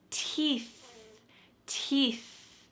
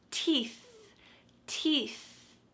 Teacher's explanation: Notice the same thing as happening. My tongue is between my teeth, and there's a stream of air coming out.